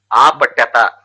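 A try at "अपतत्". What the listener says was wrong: No, Dirga nahi, only Hrasvam.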